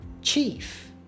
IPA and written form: tʃif (Chief)